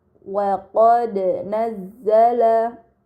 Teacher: Pada kata wa qad nazzala terdapat huruf dal sukun, ini dinamakan qalqalah, maka harus dibaca secara memantul